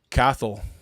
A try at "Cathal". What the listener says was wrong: quite have the pronunciation. This is cahill. Cahill. pronounced. It's pronounced more with a K. So cahill, not cattle. Cahill. almost.